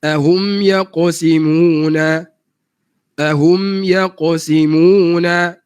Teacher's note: qaf yang mati dibaca dengan betul bukaan rahang yang sedikit